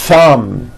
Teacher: You must stretch out the TH sound and hear the air friction. · Notice how long I'm holding the TH sound. Thumb. It's not good enough just to put your tongue between your teeth and say a TH word like this.